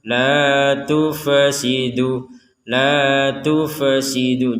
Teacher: huruf Fa ini jangan sampai ketika kita baca sukun itu dipantulkan ataupun seakan-akan dihidupkan kembali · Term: jangan sampai dipantulkan